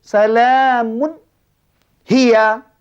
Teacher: Baris 2 tu nyata, nak terangkan, nak jelaskan tanpa ada bunyi dengung. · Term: izhar halqi